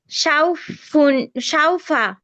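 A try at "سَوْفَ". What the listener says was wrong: আপু, এটা সিন, উচ্চারণটা সিনের মতো হচ্ছে। সাউফা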